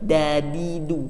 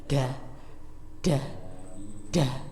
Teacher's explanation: Ya, hanya saja kalau D biasanya pengucapannya itu ada hamesnya. Nah, kalau dal ini dia tidak hamas, melainkan hanya menempel